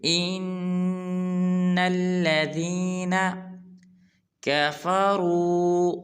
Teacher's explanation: جب حمزہ کو نون کے ساتھ ملائیں گے تو غنہ بھی کریں گے کیونکہ نون مشدد ہے